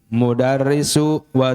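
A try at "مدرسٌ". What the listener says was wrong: Sun ya, harus jelas. Ulangi.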